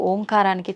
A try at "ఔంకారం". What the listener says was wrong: అది ఓంకారం కాదు, ఔంకారం. మీరు మనం పలకడమే దాన్ని తప్పు పలుకుతున్నాం. మనం మాట్లాడుతున్న ప్రతి మాటల్లో ఎక్కడో ఒక చోట అకారము ఉకారము మకారము ఉంటాయి. అకార ఉకార మకార అర్ధమాత్ర ఇది ఓంకార. అర్ధమాత్ర మకారం అన్నాడు. ప్లస్ ఆ. అర్ధమాత్ర అంటే ఔం అని ఉచ్చరించినప్పుడు అకారము ఉకారము రెండూ పలకబడి మూకారం దీర్ఘమవుతుంది.